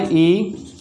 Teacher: जीभ का आगे का भाग मिलता है और तालु का आगे का भाग मिलता है। इस वजह से जो मुख की स्थिति है वो कैसी हो जाती है, बंद जैसी हो जाती है। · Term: बंद स्वर